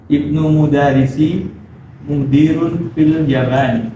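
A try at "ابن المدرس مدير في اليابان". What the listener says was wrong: Baik, fil Yaban. Ya-nya sama ba-nya panjang ya. Yaban.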